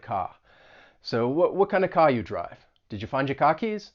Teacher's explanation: You're also going to drop the R in many words, like the word car. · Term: Boston accent